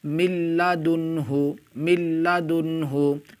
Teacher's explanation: یہاں پر دیکھیں نون ساکن کے بعد حرف یرملون میں سے لام آ رہا ہے، اس لیے نون ساکن کو لام سے ملا کر بغیر گنہ کے پڑھیں گے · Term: ادغام بلا گنہ